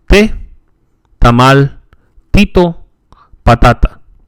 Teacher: The T is similar to the English T, except that is, again, more dental. The tongue is brought forward against the upper teeth, much like as with the D. Like the P and K sounds, the T is not aspirated.